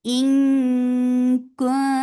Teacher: This ikhfa is light, so you are hiding the sound of noon. You are preparing your mouth to say letter kaf.